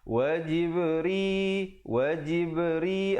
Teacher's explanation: Wajibri, wajibri, ada khalkhalah di situ. Jib, ba bertanda sukun. Ri dibaca nipis.